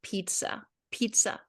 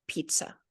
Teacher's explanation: So t, pizza, ch. Okay, but it doesn't have a lot of sh sound in it. Just a simple T and S together